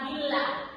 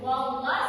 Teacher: Kalau billah dia tebal, wallah tipis.